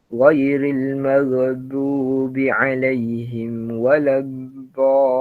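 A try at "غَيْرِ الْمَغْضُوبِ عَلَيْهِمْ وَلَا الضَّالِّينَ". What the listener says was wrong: Al-maghdu. Sedangkan dia tak melantun. Dia sebab dia ada rokhawah kat situ. Dia bukan qalqalah tu lagi. Dia baca ghairil maghdu. Gitu. Maghdu dia bukan maghdu tak, dia tak melompat macam itulah. Dia maghdu tertahan. Dia kita maghdu gitu. Nanti perbaik lagi pada huruf ghain dan juga dad lah. Dad waladha.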